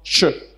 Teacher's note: le son che, phonétiquement, est l'union d'un T plus un ch. Donc, te plus ch, ça donne ch.